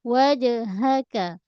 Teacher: Ha bulat pangkal kerongkong berbeza dengan ha pedas. Wajhaka. Huruf kaf pangkal lidah.